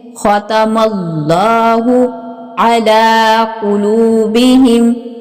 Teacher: لفظ اللہ کی لام کو پر یعنی موٹا پڑا جائے گا، ٹھیک ہے۔ ختم اللہ علی قلوبہم، اللہ کی لام کے اوپر یہ کھڑا زبر ہے، اس کو مد بدل بھی کہتے ہیں، مد بدل، ٹھیک ہے، اس کو کھینچ کے پڑھا جائے گا۔